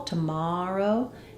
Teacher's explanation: In the word tomorrow, we stress on the mar syllable. Tomorrow. And that means that we don't do a clear vowel in the first syllable.